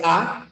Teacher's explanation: la boca se abre más y la lengua está relajada la lengua está en su posición no está baja la